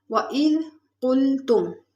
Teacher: وَإِذْ میں دال نرمی والے حروف میں سے، اس میں سٹی کی آواز بالکل نہیں آنی چاہیے۔